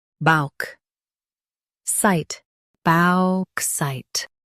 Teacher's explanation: Stress balk and keep site clear.